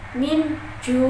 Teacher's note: Nun mati bertemu dengan ja itu ikhfa. Cara membacanya samar dengan didengung ditahan selama 3 harokat.